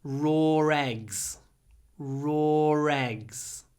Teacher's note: In British English, you can hear this linking r.